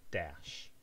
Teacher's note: dash with an esh, a postalveolar esh